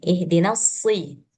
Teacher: shot dia punya sifat isti'alah, jadi dia posisi kasroh dia harus tebal juga